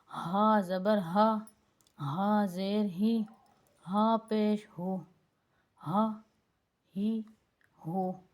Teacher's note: یہ موٹے والا ہا ہے جس کو موٹی آواز میں پڑھا جاتا ہے، گلے کے درمیان میں سے نکال کے پڑھا جاتا ہے۔ باریک اور موٹے ہا میں بہت سارا فرق ہوتا ہے، تو اس فرق کو آپ نے واضح رکھنا ہے۔